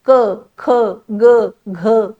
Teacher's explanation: इथे कुठेही मला बाकी कुठल्याही तोंडातल्या अवयवाचा आधार लागला नाही हे सगळे आहेत कंठवर्ण